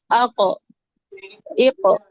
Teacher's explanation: موٹا ہونا بھی اس کی صفت ہے اور یہ کلکلا والی بھی اس کی صفت ہے